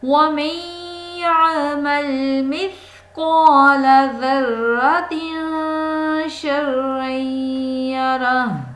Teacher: وَمَن يَعْمَلْ مِثْقَالَ ذَرَّةٍ شَرًّا يَرَهُ، پیچھے تھا خیرًا، یہاں پہ شرًّا، پیچھے تھا ذرۃ خیریں، اظہار کا قاعدہ تھا، یہاں تنوین کے بعد شین آ گیا، خا نہیں ہے، اس لیے یہاں پہ اخفا کا قاعدہ ہے